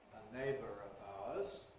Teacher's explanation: When it’s followed by a vowel, of course it’s subject to ‘linking /r/’ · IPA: /ə ˈneɪbər əv ₒaʊəz/